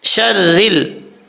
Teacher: را کے نیچے زیر ہے، را بریک پڑھیں گے، شرل، اس کو پر نہیں پڑھنا، جب لام کے ساتھ ملائیں گے تو بیچ میں الف گر جائے گا۔